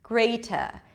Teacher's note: British speakers do pronounce it as a T greater and then they don't pronounce the R at the end okay the re the end is pronounced mostly by American speakers